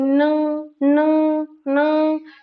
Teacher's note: जैसे न, न, न, जीभ बंद हो जाती है लेकिन नाक से ध्वनि निकलती है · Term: नासिक्य ध्वनियां